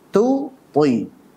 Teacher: Tu-nya tipis, poi-nya tebal.